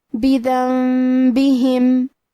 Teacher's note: ہم یہ نون ساکن کو میم میں بدل کے اور غنہ کے ساتھ یہ حکم کو ادا کریں گے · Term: قلب